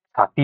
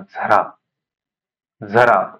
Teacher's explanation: च छ ज झ ही वर्ण अशी आहेत की त्यांचा उच्चार दोन पद्धतीने होतो य लावून उच्चार होतो आणि अ लावून उच्चार होतो